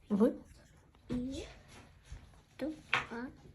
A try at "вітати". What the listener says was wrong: Ні-ні-ні. В іта. Давай одразу з'єднувати.